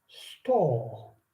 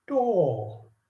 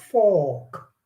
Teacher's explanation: So we need to stop saying r, because in the British English, r is not pronounced. So it goes silent, and then the o becomes longer.